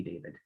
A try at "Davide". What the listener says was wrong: Okay, it's Davide. It's Davide. Just one extra syllable.